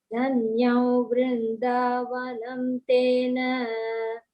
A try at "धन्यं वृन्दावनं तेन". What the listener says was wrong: So we'll not say vanau, we'll say vanantena. Dhanyam vrindavanantena.